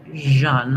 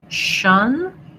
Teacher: So I write that sometimes as a ZH. It's voiced and it's similar to the SH sound in position. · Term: zh sound